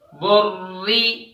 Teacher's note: با پیش برا زیر ری، بری، را پر تشدید ہے اور را کے نیچے زیر ہے، اس وجہ سے را کو باریک پڑھا جا رہا ہے